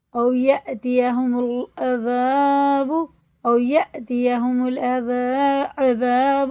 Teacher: اب یہ دیکھو واو ساکن سے پہلے زبر ہے تو یہ حرف لین ہے اور یہ چھوٹا سا حمزہ ہے، اس میں حمزہ میں جھٹکا ہوتا ہے